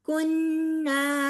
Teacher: نون مشدد ہے، نون مشدد پہ غنہ کیا جاتا ہے